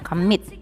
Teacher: Kemudian yang two syllable ya, stress on second syllable, dia dua suku kata tapi dia penekanan bunyinya itu ada di suku kata kedua